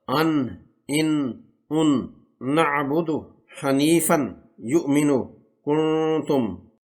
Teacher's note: نون زبان کے سرے کو سامنے اوپر والے 6 دانتوں کے مسوڑوں سے ملانے سے ادا ہوتا۔